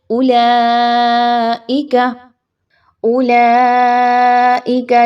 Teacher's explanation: اولئک ایسا نہیں پڑھنا ہوتا، واو یہاں پر نہیں پڑھی جا رہی، حمزہ پیش او، ادائیگی نہایت ہی کم رکھی جائے گی